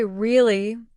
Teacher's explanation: For example, if someone says really with a rising tone, it means surprise or curiosity. But if they say really with a flat or falling tone, it might mean disbelief or even boredom